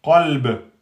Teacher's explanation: Le ba, quand il porte soukoun, il devient qalqala.